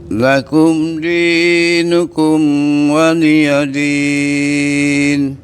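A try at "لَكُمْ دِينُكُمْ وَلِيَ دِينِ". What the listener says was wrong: Baik, mimnya jangan ditahan loh Pak, tidak didengungkan, tidak ditambahi dengung panjang, tapi biasa aja ya. Lakum dinukum wa.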